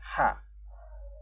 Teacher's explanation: ha yang makhrajul hurufnya di tenggorokan bagian tengah